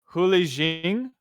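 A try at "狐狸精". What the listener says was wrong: Hu Yi Jing, Hu Yi Jing. I don't believe you put a lot of emphasis on the lead part. I think it's just Hu Yi Jing.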